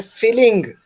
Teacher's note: એટલે કે નીચેનો હોઠ છે એ નીચેનો હોઠ ઉપરના દાંતની નીચે દબાય અને પછી એ ફનું ઉચ્ચારણ થતું હોય છે